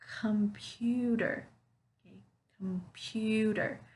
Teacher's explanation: I'm not making that little pause in between syllables I'm saying it all the way through